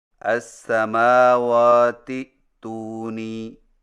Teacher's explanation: جبکہ ملانے کی صورت میں اس طرح پڑھیں گے السماوات تونی، یعنی حمزہ گر جائے گا